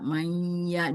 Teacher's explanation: Ee nun nun sukun bertemu dengan ya itu idgam bununah. dibaca mayya dilebur dan didengungkan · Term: idgham bighunah